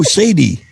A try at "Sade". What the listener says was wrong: No, it's not Sadie. It's Sade. No, Sadie has an I-E. This is S-A-D-E. Sade.